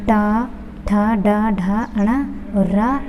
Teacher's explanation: ये मूर्धन्य से बोले जाएंगे। यानी कि टा, ठा, डा, ढा, अणा और रा